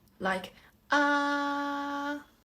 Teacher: So this tone is very flat, with no highest part or the lowest part, no raised and no turn. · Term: first tone